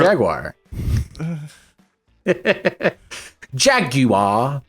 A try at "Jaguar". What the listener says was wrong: It's just Jaguar. Jaguar, adding fucking 3 extra letters for no reason.